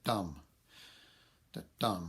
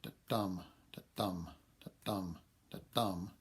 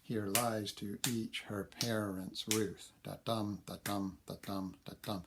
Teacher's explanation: the first syllable is not stressed the second is so it sounds like it dum-dum so if you get four